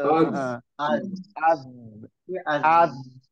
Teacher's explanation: Jadi ketika disukun-sukun baik dari dari harokat fathah, domah, ketika za-nya disukun, zalnya disukun, rokhawahnya ada gitu mengalir